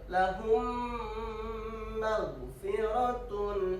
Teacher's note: Mimi terjadi apabila mim mati bertemu huruf mim. Bacaan mim dilebur dan didengungkan. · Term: idgham Mimi